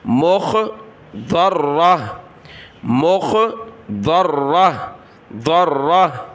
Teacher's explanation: جب رکیں گے تو گولتا کو ہا بنا دیں گے وقف میں